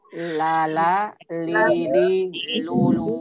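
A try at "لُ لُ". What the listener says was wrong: Nah, hati-hati ketika dhammah. Ya, ketika dhammah hati-hati ya, jangan terlalu dorong. Lulu, tebal. Ngumpul suara di depan. Lulu. Coba sengajain deh. Dorong kuat-kuat. Lulu sampai membulat. Suaranya kayak apa? Tebal ya. Ya, jangan terlalu dorong. Tapi tetap monyong ya. Tapi tidak membulat. Lulu.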